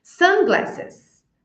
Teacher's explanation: essas palavras que são compostas nós vamos pronunciar com ênfase a sílaba tônica vai ser a primeira a primeira palavra é a sílaba tônica então aqui eu não